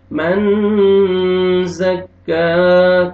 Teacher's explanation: نون ساکن کے بعد زار ہے، حروف اخفاء میں سے آپ اخفاء کریں گے · کاف کے اوپر فتحہ الف صغیرہ ہے، الف مدہ کے قائم مقام ہے، آپ نے 1 سیکنڈ آپ نے کھینچنا ہے۔ الف مدہ لاسٹ میں آپ نے ہا کو بھی 1 سیکنڈ کی طرح آپ نے کھینچنا ہے، برابر آپ نے 1 سیکنڈ کے برابر آپ نے اس کو کھینچنا ہے۔